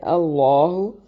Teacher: لفظ اللہ کو موٹا ادا کریں گے